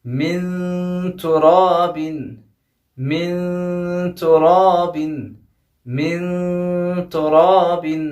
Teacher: مین کے نون کو چھپا رہا ہوں، تو میری پوری توجہ تا پہ ہے، کیونکہ نون ساکن کے بعد فوراً تا آیا ہے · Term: اخفا